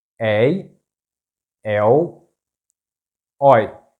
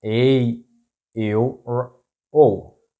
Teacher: It's this open sound éi, ée, ói.